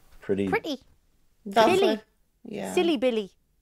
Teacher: if a word ends with a Y we will hear an E sound however in the Jordy accent this will be shorter